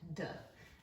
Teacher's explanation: D is voiced, meaning your vocal cords vibrate when you make the sound